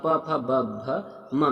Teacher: प वर्ग जो है आपकी ओष्ठ ध्वनि है। च जो है साथियों, च जो है वो आपका तालव्य ध्वनि है।